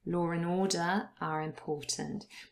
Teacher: The R is added. Law and order are important.